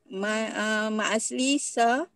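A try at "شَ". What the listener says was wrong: Sya, bukan sa, sya. Mana ada, pendek je. Mari sukun panjang. Mari sukun panjang ya. Bisharik pendek je. Tak ada mari sukun ya.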